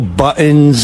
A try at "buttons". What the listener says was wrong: T, you got to say a T.